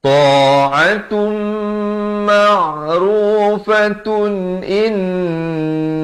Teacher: Tapi kalau tuan-tuan pilih untuk sambung, dia jadi hukum izhar halqi di sini. Tanwin bertemu hamzah.